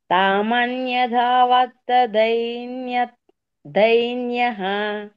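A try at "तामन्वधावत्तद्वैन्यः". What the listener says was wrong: తామన్వా, న్యా కాదు, తామన్వా. ద్వైన్య ద్వైన్య ద్వైన్య తామన్వధావత్తద్వైన్య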